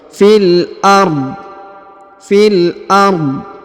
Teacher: Huruf fi langsung sambung masuk ke huruf lam ya.